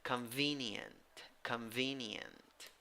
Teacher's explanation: three syllables the second syllable is the stressed syllable